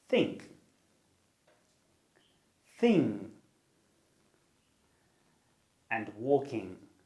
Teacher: The sound is called the velar nasal, which means that you curl your tongue up against the back of your mouth and the air comes out of your nose. The sound is made through the nose rather than the mouth and is voiced, which means that you use your vocal cords. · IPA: /ŋ/